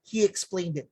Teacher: Native speakers, they will add a Y in between the long E sound. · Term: intrusion